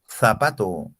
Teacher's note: para pronunciar la zeta tengo que sacar la lengua y ponerle en medio del maxilar superior y maxilar inferior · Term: fonema interdental